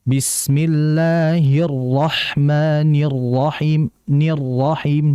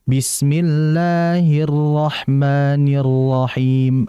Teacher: Hati-hati dalam mengucapkan ra idza tushaddadu, ketika dia bertasydid. Nah, ra bertasydid di situ ada unsur nabr. Nabr itu adalah hentakan. Sehingga dijelaskan getaran serta hentakan ra-nya Bismillahirrahmanirrahim.